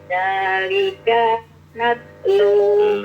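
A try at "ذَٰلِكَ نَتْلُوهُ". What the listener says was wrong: lekapnya pendekin, jangan zalika jadi panjang kafnya, pendekin zalika nat.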